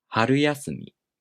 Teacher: When these two words are combined, the first part becomes unaccented, and the accent falls on the first mora of the following part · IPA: [haruyaꜜsumi]